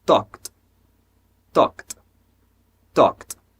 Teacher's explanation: o meu K conecta com D, mas só que esse D tem som de T.